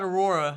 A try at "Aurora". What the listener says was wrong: Aurora. no A.